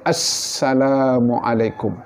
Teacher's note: Jangan takut keluarkan bunyi safir bagi sin. Salah satu sifat bagi huruf sin adalah safir iaitu bunyi siulan itu. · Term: sofir